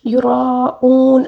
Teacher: اب دیکھیں یراؤون، را کو پر اور مد لازم بھی ہے، مد لازم کو 5 الف کے برابر کھینچ کر پڑھنا ہوگا. یراؤون آخر میں جو واو مدہ ہے اس کو تقریباً 3 الف کے برابر کھینچ کر پڑھیں گے